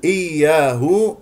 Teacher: نسمع صوت الياء الساكنه من الياء المشدده